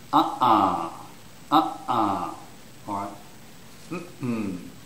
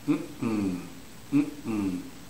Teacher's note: the first syllable is stressed.